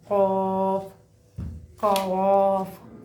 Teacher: زبان کی جڑ کا آخر جو کوے کے پاس ہے، جو اوپر کے تالو سے لگے